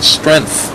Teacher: this K is an epenthetic K. It is a stopgap measure to aid in making a difficult transition